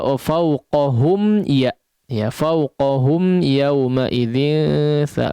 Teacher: fauqahum di sini mim diizharkan ya. Nah, kadang kita dengar di sini cenderung mengidghamkan ya, fauqahum ya fauqahum ya kadang digunnahkan agak terlalu panjang, ini tidak tepat.